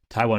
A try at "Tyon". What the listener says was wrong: Tyon, I think. Tyon or Tion? Tyon. There's no W though. You were manifesting. W. Yes.